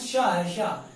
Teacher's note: और ये दोस्तों शा है, शा, ये आप लोगों को हमने बताया था ये ऊष्म व्यंजन भी है और मूर्धन्य व्यंजन भी है